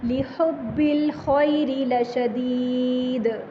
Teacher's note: خو میں تھوڑی سی خرخراہٹ لے کے آئیں گے، لحب الخیر لشدید، دال پہ قلقلہ، لام زبر لا لمبا نہیں کریں گے، جیسے لشہید ایسے ہی لشدید۔